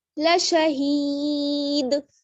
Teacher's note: دال کو ساکن کر دیں گے دو پیش ہٹا دیں گے اور دال پر قلقلہ ہوگا